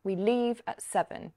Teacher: leave is said more loudly and slowly than we because it's more important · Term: sentence stress